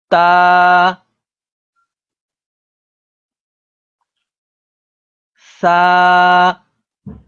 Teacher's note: زبان کا کنارہ اور اوپر کے دانتوں کے ساتھ ٹچ کر کے پڑھیں گے